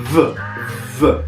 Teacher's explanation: Devo pensare di leggere una B, ma senza esplosione, senza un'occlusione. V. Non è una V, perché la V in monellico non esiste, ma V. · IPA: /β/